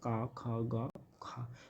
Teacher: जितने भी कंठे वर्ग के व्यंजन आते हैं, का, खा, गा, खा, ये हमारे कहाँ से आते हैं, कंठ से आते हैं